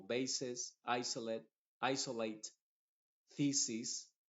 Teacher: la s está funcionando como una s normal a pesar de que está entre dos vocales